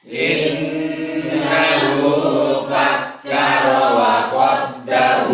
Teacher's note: Yang innahu dengungnya lebih lama. Kemudian wa qaddar, ra-nya dia tafkhim, tebal.